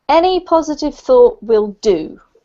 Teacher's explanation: the emphasis comes heavily on the will do because what you're saying is that anything anything any positive thought